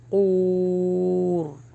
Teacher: را کو ہیوی روکیے